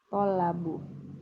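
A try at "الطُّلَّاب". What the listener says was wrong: Masa to-nya fathah? Tullab jadi dhamma ya. At-tullabu silakan.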